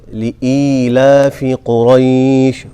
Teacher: لے نہیں پڑھنا اس کو لی لام زیر لی لإیلاف قریش اور ای کو تھوڑا سا کھینچ کے پڑھیں گے